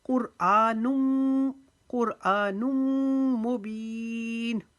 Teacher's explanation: قاف کو موٹا پڑھیں گے، را کو موٹا پڑھیں گے۔ آ کو ایک الف کی جتنا لمبا کریں گے، دو پیش کی تنوین کو میم مشدد کی وجہ سے یہاں پر ایک الف کے جتنا ہم رکیں گے۔